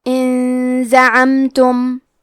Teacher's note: اخفاء کا معنی ہے چھپا دینا تو ہم نون ساکن کو چھپاتے ہوئے اور غنہ کے ساتھ یہ حکمے کو ادا کریں گے